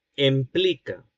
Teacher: este hablante empleó en la escritura el semicerrado anterior en lugar del cerrado anterior, es decir, E en lugar de I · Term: vacilación de vocales átonas